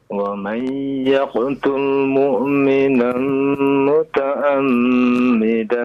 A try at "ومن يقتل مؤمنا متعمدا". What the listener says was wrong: Muta'ammidan pakai huruf ain ya. Nah, huruf ain jangan hamzah.